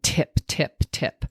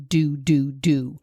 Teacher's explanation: that's the tip of the tongue coming up and hitting kind of the front part of where your front teeth come in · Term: T sound